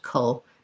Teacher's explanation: And then this letter C stands in for the K, the K sound. And we have basically almost no vowel or a schwa for the letter A because we have our dark syllabic L at the end